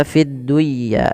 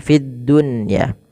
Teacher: ketika nun sukun bertemu dengan ya itu harus diidgamkan tapi karena di sini dalam satu kata maka tidak diidgamkan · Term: Izhar mutlak